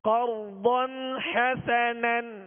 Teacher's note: قرضاً پہ غنہ ہم نہیں کریں گے اس لیے کہ یہاں اظہار کا قاعدہ ہے